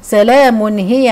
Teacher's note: تنوين وبعديه هاء والهاء من حروف الاظهار الحلقي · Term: اظهار حلقي